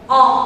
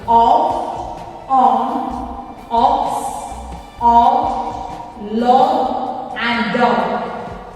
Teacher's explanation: Letter O should be pronounced as A from the throat. The sound should come from the throat and your mouth should be wide open.